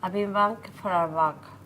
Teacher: I changed the hour into the schwa, a big bang for a buck.